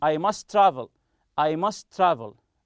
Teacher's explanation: if someone doesn't know English he will say this is just one letter must travel as if it is one t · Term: linked